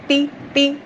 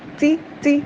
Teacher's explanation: اگر آپ آواز سختی سے ٹھہرائیں گی تو ٹی ٹی ہمس نہیں آئی نا، اب سی سی ہمس آئی ہے۔